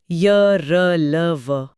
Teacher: इन्हें अंतस्थ इसलिए कहते हैं क्योंकि ये स्वर और व्यंजन के अंतः यानी बीच में स्थित हैं। इन्हें बोलते समय जीभ मुंह में कहीं भी पूरी तरह स्पर्श नहीं करती, हवा आसानी से निकल जाती है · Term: अंतस्थ व्यंजन